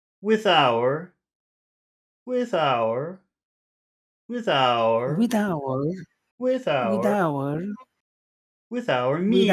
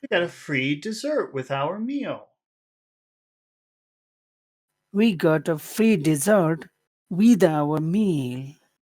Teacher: we'll start the phrase on a high tone and then we'll go down